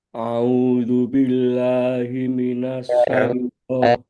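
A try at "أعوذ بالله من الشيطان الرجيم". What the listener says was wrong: A sama Ain harus dibedakan. A'udzu billah.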